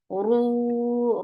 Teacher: ro is heavy and make it 2 counts long